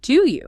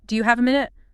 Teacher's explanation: The phrase is, "Do you have a minute?" >> Again, listen to the linkage there. Do you becomes a single physical movement.